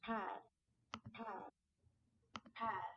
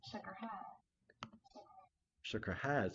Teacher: The vowel eh has been backed and lowered to something more like a, so as in dask and had. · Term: Northern City shift